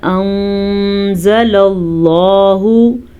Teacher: بِمَا انزل اللہ نون ساکن ہے اور نون ساکن کے بعد زا حروف اخفا میں سے ہے تو ہم نون ساکن کو چھپا کے پڑھیں گے غنے کے ساتھ پڑھیں گے. لفظ اللہ کو پر پڑھیں گے کیونکہ لفظ اللہ سے پہلے زبر ہے